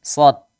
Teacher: Lihat, sod dibaca tebal. Jadi jangan sampai kita baca tipis. Kalau tipis tuh jadi huruf sin